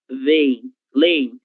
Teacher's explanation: vocês podem pronunciar como se houvesse apenas uma vogal E, não tem nenhum problema